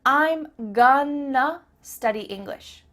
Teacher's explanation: That word to simply becomes a.